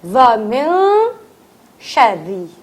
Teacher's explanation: را پتلا کیونکہ را کے نیچے زیر ہے